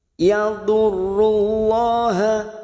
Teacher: lam jalalah yang didahului dumah kita baca tafkhim